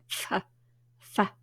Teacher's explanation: Where do you put your teeth when you make the F sound? Just behind the back of your bottom lip.